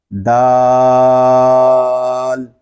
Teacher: یہ حرف جو ہے یہ زبان کی نوک اور اوپر کے دانتوں کی جڑ سے ادا ہوتا ہے، دال۔ آگے رال، اس کو ہم ذال نہیں پڑھیں گے بلکہ لام کو سکون کے ساتھ ادا کریں گے۔